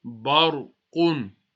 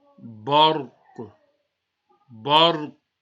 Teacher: Now remember, Ra is Sakin, the letter before is go as Zabar, so you need to read the Ra with the full mouth.